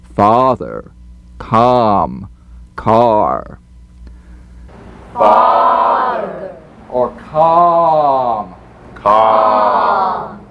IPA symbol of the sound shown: ɑː